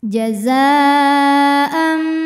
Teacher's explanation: Mad tabi'inya alif didahului harokat fathah, sedangkan hamzahnya an pada kata jazaan, maka zai dipanjangkan boleh 4 boleh 5 harokat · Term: mad wajib muttasil